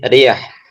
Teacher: Yang pertama maksurah ro ketika berharakat kasrah seperti riah atau riah maka ro ini tipis. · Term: tarqiq